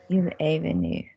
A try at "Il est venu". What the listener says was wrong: That wasn't throat joined. Join it in the throat for me. Il est venu.